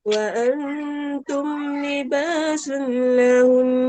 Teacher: Sabdu dengan nun ma'al guna sahaja. Wajibul guna. Jadi kena baca dengan dengung. Walaupun ketika wakaf walaupun dia berhenti.